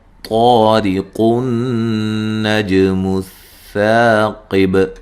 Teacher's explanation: قاف کو نون سے ملا دیں گے